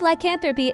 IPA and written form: laɪˈkænθrəpi (lycanthropy)